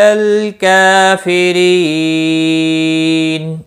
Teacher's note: رو زیر کی وجہ سے باریک ہوگا، اور نون وقف کی صورت میں نون ساکن پڑھا جائے گا، وقف بالاسکان ہوگا۔ مد العارض وقفی ہوگا، 3 سے 5 الف کے برابر کھینچ کر وقف کریں گے · کاف کے اوپر کھڑی زبر ہے، 1 الف کے برابر کھینچ کر پڑھیں گے